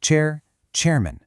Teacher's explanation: But a two-cllable word like chairman also takes up about one beat. We just say the man part super fast to fit it in. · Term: stress timed language, stress-timed language